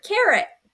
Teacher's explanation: The schwa can sound a little like a short I sound, like in the word carrot.